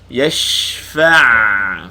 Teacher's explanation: shin sukun, panjangkan bunyi shin, hamburkan angin dia.